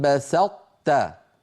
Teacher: ادم في سوره المائده لئن بسطت الي يدك لئن بسطت بسطت نطبق على طاء ونفتح على تاء